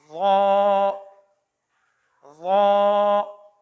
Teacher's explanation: سے یہ تھوڑا سا پر یعنی کہ موٹا پڑا جائے گا۔ زبان کی نوک جب اوپر والے سامنے کے دانتوں کے کناروں سے لگے مگر منہ کھول کر یعنی موٹا کر کے ادا کریں گے